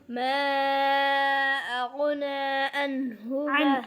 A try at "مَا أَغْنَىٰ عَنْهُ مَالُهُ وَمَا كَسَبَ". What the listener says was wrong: عين को वाज़े करो. शाद नहीं है इधर, कलकला है गसब पे.